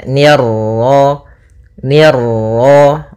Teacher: ni tipis ketemu ra yang ra tafkhim, ra tebal